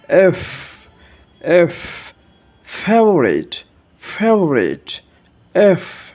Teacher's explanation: উপরের দাঁত নিচের ঠোঁটের সাথে মিলিয়ে হালকা বাতাস বের হবে